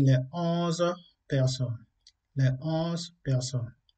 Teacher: la liaison ne se fait pas devant les chiffres